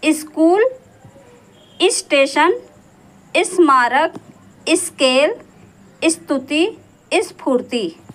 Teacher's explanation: आधे स के बाद जब स्पर्श व्यंजन आता है तब स से पहले ई ध्वनि का प्रयोग होता है